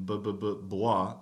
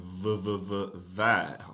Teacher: your lips are coming together BBB but vvv your lower lip is touching your teeth